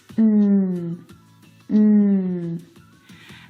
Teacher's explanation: the n Sound is made back in the soft palette it's a nasal sound